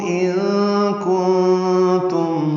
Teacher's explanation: نون ساکن کے بعد کاف اور تا آنے کی وجہ سے دونوں جگہ اخفا ہے، ان کی آواز چھپائیں گے